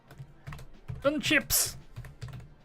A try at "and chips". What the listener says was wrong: Burn chips? No, but you didn't enunciate properly, so you said burn chips.